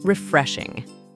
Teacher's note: The word is stressed on the second syllable.